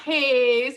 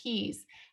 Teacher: Okay, not his, but it's he's with a long E in English, he's.